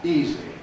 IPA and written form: ˈiːzi (easy)